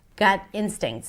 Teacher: Gut instincts, stress on instincts.